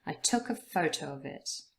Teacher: took and photo are the main words that are stressed in the sentence. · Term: sentence stress